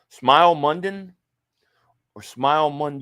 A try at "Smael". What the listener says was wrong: Yeah, they say it's Smile, but it's like SMAEL.